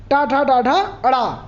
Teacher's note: अब ट वर्ग में आपको आएगा तो ऋतु रसणाम मूर्धा, ऋतु रसणाम मूर्धा, मतलब री सी का और पूरा ट वर्ग ये मूर्धन्य से बोले जाते हैं